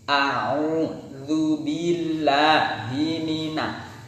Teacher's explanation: ada mim ini ada sifat gunnah, dia punya sifat gunnah atau berdengung.